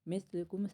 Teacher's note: ادغام مال غنہ بھی کہا جاتا ہے. مثلکم سا نرمی سے اور کم روکیں گے